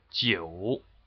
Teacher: The third tone is a dipping rising tone. So it goes from 2, 1, 4, and it's in the number 9, 9.